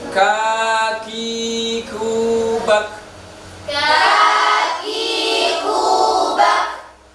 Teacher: Sekarang yang berikutnya huruf kaf. Sama dengan k, tapi mempunyai sifat hamas.